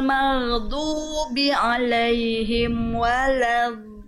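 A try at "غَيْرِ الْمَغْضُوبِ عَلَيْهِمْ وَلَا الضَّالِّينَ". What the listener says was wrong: kurang panjang mad lazim enam harakat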